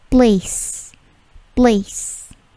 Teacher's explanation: P-nya tidak plosif, bukan place tetapi place